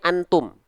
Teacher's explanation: dengungannya sedikit karena yang masuk ke rongga hidungnya sedikit tapi dia masih ada sebagian suara yang berkumpul dalam depan mulut · Dia dengungan yang lemah menjauhi ang. Ketika kita buka tutup hidung, suaranya masih bersisa. Suaranya masih ada sisa.